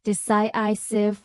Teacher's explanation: decisive with stress on the second syllable